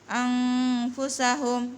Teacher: dibaca itu samar-samar, namun disertai dengan gunna atau dengung